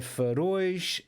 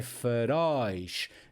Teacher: E estes plurais têm o som aberto, daí o acento. É para indicar esta abertura da letra O, da vogal O.